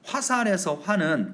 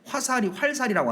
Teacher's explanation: 화살이 되면서 리을이 탈락했습니다. 음운 개수가 -1 됐네요.